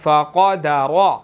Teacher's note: فقدر، قاف موٹا ہے، را بھی موٹا ہے